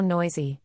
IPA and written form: ˈnɔɪ.zi (Noisy)